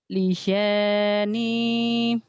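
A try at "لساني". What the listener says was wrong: Sin kecil. Lisani. S-nya biasanya.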